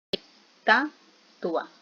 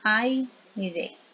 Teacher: Que vamos a tener dos vocales juntas y se pronuncian de una sola vez. Entonces es bien importante porque el diptongo en sí es una unidad, es una sílaba.